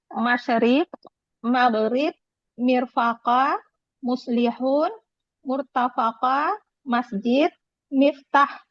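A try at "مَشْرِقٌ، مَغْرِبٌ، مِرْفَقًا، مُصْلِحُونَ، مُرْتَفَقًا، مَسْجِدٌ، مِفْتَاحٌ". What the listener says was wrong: Dibaca lengkap-lengkap Bu. Jangan dibaca apa. Masrikun, maghribun, mirfaqan, baca lengkap-lengkap ya. Muslihuna. Muslihuna.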